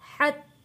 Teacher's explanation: یہاں پہ تا کے اوپر تشدید ہے رک کر تھوڑا سختی کے ساتھ ہم نے یہاں تا کو ادا کرنا ہے